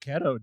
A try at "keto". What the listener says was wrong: I think you better change that pronunciation because that didn't sound like keto. It sounded like pedo.